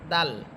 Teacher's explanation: দাল হরফের মাখরাজ হচ্ছে জিহ্বার আগা সামনের উপরের দুই দাঁতের গোড়ার সাথে লাগবে, দাল। আর বদ, এটার মাখরাজ হচ্ছে জিহ্বার গোড়া উপরের মারির দাঁতের গোড়ার সাথে লাগবে, অর্থাৎ চোয়ালের সাথে লেগে বদ।